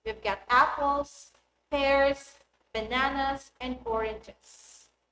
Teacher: In the first example, the intonation rises on each item on the list and falls on the last item to show that the list is finished.